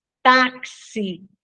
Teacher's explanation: O X, quando ele aparece com som de KS, táxi, né? Ó, na palavra táxi, o X tem som de KS, então, uma letra só que representa dois sons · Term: dífono